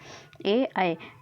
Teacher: अर्धविवृत स्वर जो होता है समृत स्थिति से कुछ अधिक खुला होता है, अर्थात मुंह आधे से कम खुलता है।